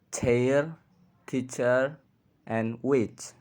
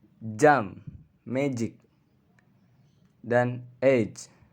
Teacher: Konsonan gerak atau konsonan paduan adalah sebuah fonem yang direalisasikan sebagai bunyi antar bunyi letupan dan bunyi desis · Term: affricates